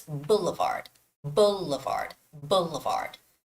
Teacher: okay and the word is Boulevard Boulevard so you make it you sort of cut that word into three syllables and the stress is on the first syllable